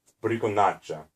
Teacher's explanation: The A vowel is the longest of all those vowels.